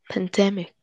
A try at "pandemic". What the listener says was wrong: Pandemic. Not pandemic. Earlier you said pandemic. The stress was in the d. Instead, the stress is at the first part. Pandemic.